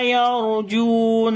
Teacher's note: را کو موٹا پڑھیں گے، را کے اوپر جزم ہے، اس سے پہلے زبر ہے ، اس وجہ سے، اور را کے اوپر صفت توسط بھی